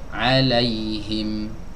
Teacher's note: huruf mim keluar dari dua bibir yang dirapatkan